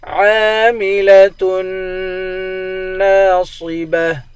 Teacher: عین کو ایک الف کے مقدار کھینچ کر پڑھیں گے، تا کو نون کے ساتھ ملا کر نون پر غنہ کریں گے. نون کے بعد الف ہے، الف حروف مدہ ہے، اس کو ایک الف کے مقدار کھینچ کر پڑھیں گے.